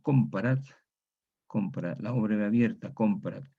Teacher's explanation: Y hay un caso particular de la O breve abierta cuando hay un grupo de nasal más consonante. El grupo de nasal más consonante puede influir sobre la O breve, cerrándola en un grado, impidiendo su diptongación.